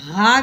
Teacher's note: یہ ہا ہے، ہا دو آنکھوں والی ہا، موٹی ہا جو حلق سے نکلتی ہے نیچے والے حصے سے ہا کر کے، اور اس کے اوپر زبر لگی ہوئی ہے، اس کے ساتھ الف لگا ہوا ہے، ٹھیک ہے۔